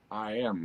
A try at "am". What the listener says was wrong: No, that's not pronounced That's pronounced am. That's a different vowel. That's mouth shape 2. Am.